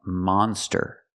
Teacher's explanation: We have to use the open sound, monster. Ah, like hot and stop.